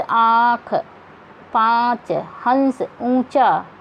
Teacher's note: अनुनासिक होते हैं जिन स्वरों का उच्चारण हम नाक और मुंह दोनों से करते हैं।